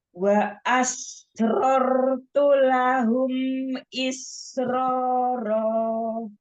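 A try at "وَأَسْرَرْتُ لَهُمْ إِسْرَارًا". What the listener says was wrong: Nah ini Hasan, Masya Allah. Coba disempurnakan lagi,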